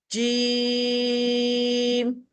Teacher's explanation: یہ ہماری وسط لسان سے ادا ہوتا ہے. جب زبان کا درمیان حصہ اوپر تالو کے ساتھ چپکتا ہے تو ہم جیم پڑھتے ہیں